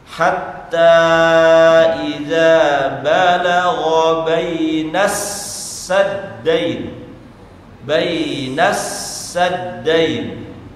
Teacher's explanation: alif lam itu tidak tersentuh karena disebabkan tasydid di atas huruf setelah lam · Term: alif lam syamsiyah